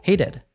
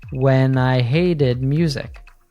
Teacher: she said hated with a tap T, which sounds like a soft D sound